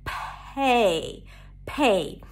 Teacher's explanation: The first syllable is pay, as in, I need you to pay for this, a P sound and the A as in day. When the P appears at the beginning of words, it's aspirated, so it feels like there is a little H right after. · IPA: pʰei